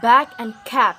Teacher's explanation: this consonant there is a vibration for example back and cap oral passage is blocked by closing the lips so this is bilabial · is blocked by closing the lips so this is bilabial buh buh is voiced because when we say this consonant there is a vibration